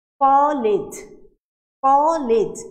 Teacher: আমি কটাকে যতক্ষণ ইচ্ছা টানতে পারছি ক, কিন্তু যখন বলছি লেজ আমি আর চাইলেও সেটা টানতে পারছি না। তাহলে এই লেজটা হচ্ছে বৌদ্ধাক্ষর।